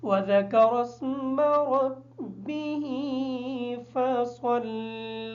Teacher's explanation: فصلی کی جو سواد ہے اس سواد کو صحیح طریقے سے ادا کریں گے تاکہ سین کی آواز ادا نہ ہو